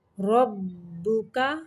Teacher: را کو بھی موٹا پڑھنا ہے اور با مشدد ہے اس لیے را کو با کے ساتھ تھوڑی دیر تک ملانا ہے